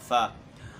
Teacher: اور اس کا مخرج یہ ہے کہ اپنے دانتوں کی نوک یہ نچلے ہونٹوں کے اندرونی تری والے حصے پر جب لگے گا تو اس سے فا ادا ہوگا